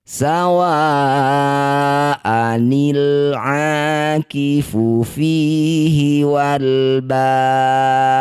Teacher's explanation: Ketika disukun jadilah bacaan kolkolah, namanya kolkolah kubro. Dipantulkan ya dalnya.